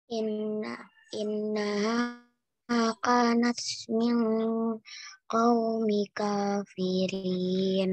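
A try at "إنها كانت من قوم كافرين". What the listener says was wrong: Nah, ulang lagi, qaumi atau qaumil? Dengung enggak? Ada kasrah tanwin.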